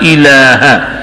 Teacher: الہ کے ہا کو لمبا نہیں کرنا, الہا نہیں پڑھنا, الہ بڑا زبر ہے, کھڑا زبر نہیں ہے.